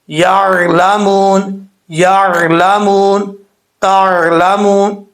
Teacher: ٹھیک ہے، عین پہ کبھی جھٹکا نہیں آتا، یہ بھی یاد رکھیے گا. جھٹکا حمزہ ساکن پہ ہوتا ہے، عین نارمل پڑھا جاتا ہے، جھٹکا کے ساتھ نہیں پڑھا جاتا.